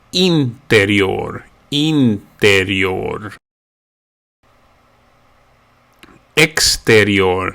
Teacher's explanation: the initial i is pronounced more like an e